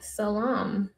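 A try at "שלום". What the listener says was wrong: It has an H, creative. Shalom. Not shalom.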